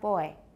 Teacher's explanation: English has little or no voicing during the closure